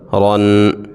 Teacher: رو دو زبر رن۔ جب را کے اوپر دو زبر آ جائے، را کو موٹا پڑھتے ہیں